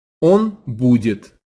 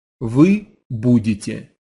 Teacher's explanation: the T sound at the end of the he or she form, right, that word будет, changes to a tie sound, budetye. Listen again.